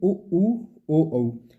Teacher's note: जिनके उच्चारण करते समय ओठों की आकृति गोल हो जाती है वृत मुखी हो जाती है ऐसे स्वरों को वृत मुखी स्वर कहा जाता है